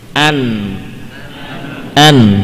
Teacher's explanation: Nah, itulah huruf nun. Ya, jadi nun ujung lidahnya bukan nempel ke gigi tapi ke gusi yang di atas gigi seri.